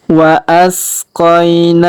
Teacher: Kemudian huruf mim sukun bertemu mim bertasdid, maka mim sukunnya melebur masuk ke huruf mim bertasdid. Kita tahan dan kita dengungkan 2-3 harokat